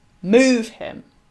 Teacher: a stressed and then an unstressed syllable